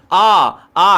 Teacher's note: इस तरीके से अगर आप जब बोलोगे तो ये गले से आवाज आपका जो डब्बा है ना गले वाला यहीं से कहीं ना कहीं आवाज आ रही तो ये कंठ हो जाएगा